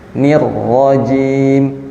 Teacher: jim itu berada di tengah lidah